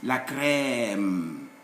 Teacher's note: It's like a gliding A sound, like saying A several times